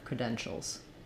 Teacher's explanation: it respelling it creden scholes and thinking about this as being almost like I'm going right from the sh to the L shows not a lot of stress or time on that schwa